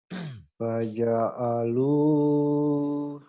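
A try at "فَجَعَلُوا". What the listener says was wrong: faja'alu, bukan faja'al. Faja'alu. Diulang lagi.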